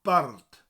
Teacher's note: So go to say the word bard, but roll the R.